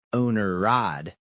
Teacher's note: First, I am dropping the H sound from the word had. This is very common in fast speech for small grammar words.